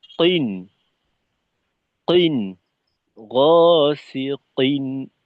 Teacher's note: প্রথমত তো হলো মাখরাজে জোর লাগাইতে হবে। এটা যেন ওই কাফের মতো করে কিন হয়ে না যায়। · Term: কফের উচ্চারণটা